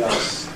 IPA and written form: ɑːss (asks)